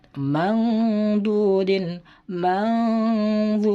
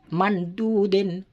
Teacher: Jadi tidak boleh dibaca mandudin, tidak boleh, harus didengungkan serta samar nun matinya